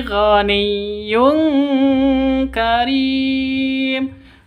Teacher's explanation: Tanwin bertemu dengan kaf. Cara bacanya samar didengungkan siap-siap ke huruf kafnya. Tanwinnya ditambah dengan ng. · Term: ikhfa hakiki